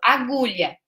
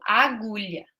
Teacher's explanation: aquele último Azinho, a gente quase não percebe, porque ele não é tônico, né? Ele fica sem força, então a criança não percebe.